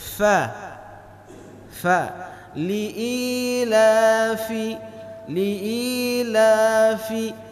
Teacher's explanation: perut bibir kita bahagian bawah harus mengenai gigi seri atas saja